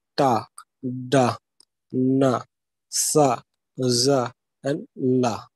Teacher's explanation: If you will pronounce this ta, you will find that okay how the alveolar ridge actually touching the upper plate. Okay, the tongue is actually touching the upper plate at the end of the alveolar ridge · these sounds are formed with the front part of the tongue on the alveolar ridge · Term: alveolars